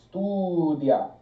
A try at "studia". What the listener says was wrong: Now you're putting too much pressure on the A. Release it all as if the A at the end didn't matter in the word.